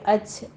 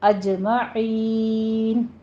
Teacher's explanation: جیم کے اوپر آپ نے قلقلہ کرنا ہے، حمز کی آواز نہیں آنی چاہیے، اج نہیں کہنا ہے، اجمعین۔